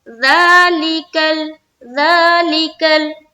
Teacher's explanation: کھڑا زبر ہے۔ تو ذا کو کھینچ دیا، ذا ایک الف کی مقدار کے بقدر